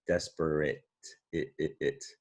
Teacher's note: I took the E out of desperate because that silent E usually makes a long vowel sound. But when you say desperate, you kind of hear an I, don't you? A short I sound